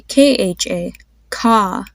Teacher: you have to aspirate which means you release a breath of air when you say it and there's a more of a h sound that comes for